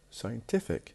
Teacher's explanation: So we have scientist, the stress on the beginning. When we add IC to it, scientific, the stress will be moved to the one before the last.